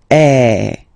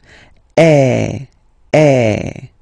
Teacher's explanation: the sound is really open, and normally your mouth should be opened a little bit more than with the accent aigu as well.